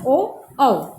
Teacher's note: कंठ और होठ से जो हम उच्चारण करते हैं उसमें स्वर में उच्चारण होता है ओ औ। ठीक है, इसको हम क्या बोलते हैं, कंठोष्ठी।